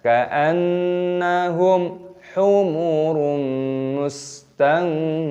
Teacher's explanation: Ka'anna nun tasdid hukumnya dibaca ghunnah berdengung, dibaca ka'annahum, mim sukun bertemu dengan ha, idhar syafawi, dibaca jelas ka'annahum humurum, dhammah tanwin bertemu dengan mim, dibaca idgham bi ghunnah, dibaca berdengung